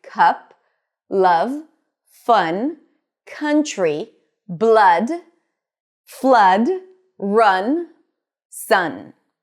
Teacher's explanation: the cup sound is slightly more open and it's always stressed. And because it's stressed, it's usually longer a little bit and a bit more emphasized